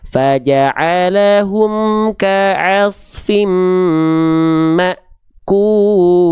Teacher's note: kenapa terhenti karena ada hamzah sukun yang di mana hamzah itu punya sifat syid syiddah